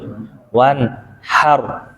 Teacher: sifat takrir atau Getaran yang ada pada huruf ro adalah Getaran yang lembut tuh diulang dua kali Jadi intinya takir itu bukan getar aja